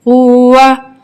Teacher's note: واو کو ہم نے کیسے ادا کرنا ہے، دونوں ہونٹوں کو گول کر کے